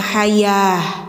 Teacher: Nah, ini bacanya jadi ha ya. Ta bulat ketika mati suaranya jadi ha ya. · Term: tak bulat